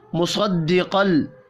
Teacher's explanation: सौद और क़ाफ पुर पढ़े जाएंगे।